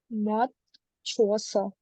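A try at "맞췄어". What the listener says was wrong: Not moth, not the, it's ma only. The final sound will be ma.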